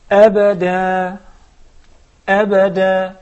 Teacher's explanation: when we stop, we remove the tanween. The noon turns into, the tanween becomes mere sukun. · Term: no tanween